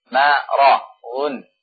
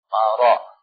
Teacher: Di depannya adalah ra, ya. Ra yang mufakhamah.